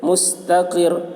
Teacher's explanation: مس، تا کے اوپر زبر ہے، زبر کو جلدی پڑھیں، تھوڑا بھی نہ کھینچیں۔ را کے اوپر تشدید ہے، تشدید والے حرف کو 2 مرتبہ پڑھیں گے، ایک مرتبہ پہلے حرف سے ملا کر، ایک مرتبہ خود اسے۔ مستقر، را کے اوپر 2 پیش کی تنوین ہے، 2 پیش پر وقف کر، را کے 2 پیش پر وقف کرنا ہو تو را کے 2 پیش کو حالت وقف میں جزم سے بدل کر پڑھیں گے۔